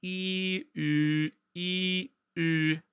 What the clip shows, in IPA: i y i y